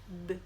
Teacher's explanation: Ele é um som linguodental, ou seja, a gente apoia a pontinha da língua atrás dos dentes, não necessariamente no dente, né? Um pouquinho para trás ali nos alvéolos.